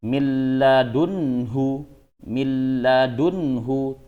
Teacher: itu dengung Nah kalau un itu tidak dengung ya milladunhu milladunhu tidak dengung nunnya sudah tidak terbaca ya langsung ke huruf lamnya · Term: Idam bilagunah